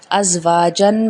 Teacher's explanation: حمزہ زبر زا از، واؤ الف زبر وا، جیم الف دو زبر جن، ازواجن میں زا جو ہے سیٹی والا ہے